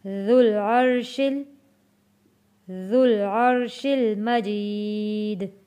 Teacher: یہاں پہ واو اور الف نہیں پڑھے جائیں گے کیونکہ ذال جڑے گا جزم والے لام کے ساتھ